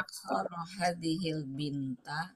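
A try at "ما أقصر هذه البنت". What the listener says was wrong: Tapi nadanya bukan bertanya ya.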